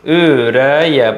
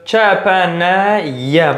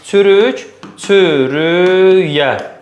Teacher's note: hər bir K-dən sonra saitlə başlayan söz gəldiyinə görə Y cingiltili kimi tələffüz olunur